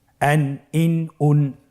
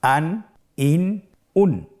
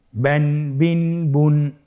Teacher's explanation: প্রত্যেকটি উচ্চারণের শেষে দন্ত ন উচ্চারিত হচ্ছে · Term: তানবিন